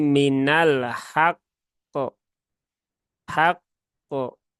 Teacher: Nah, kalau wakaf ya, kalau wakaf maka sukunkan dulu qafnya, setelah itu baru ditunaikan tasydidnya.